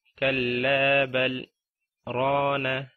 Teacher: بل کے بعد سکتہ ہے، وہاں پر آپ نے رک جانا ہے لیکن سانس نہیں توڑنا۔ اور وقفہ جو ہے اس میں آپ نے رکنا ہے، سانس نہیں توڑنا، لیکن یہ وقفہ تھوڑا لمبا ہوگا۔